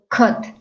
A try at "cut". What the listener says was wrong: And you open a little bit more your mouth to pronounce it. Cut. Right.